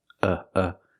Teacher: the second vowel is a short uh like cup and up uh uh g g the stress is on the first syllable